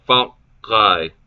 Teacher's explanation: the second syllable is elided, and the word becomes fakai, with the K held for the time it takes to pronounce the other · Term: held K